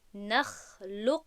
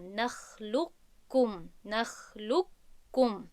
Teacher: لام رو به کاف پیوست میکنیم و قاف در درون کاف گم می شود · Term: ادغامی کامل